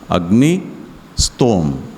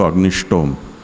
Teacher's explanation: और स्तोम यानी उसकी स्तुति, वो व्याकरण के नियम के अनुसार यहाँ ष्टुत्व हो जाता है। अग्निस है उसका जो दंत्य सकार है उसका मूर्धन्य हो जाता है, उस स्तोम का जो तकार है उसका टकार हो जाता है स्टुनाष्टु से।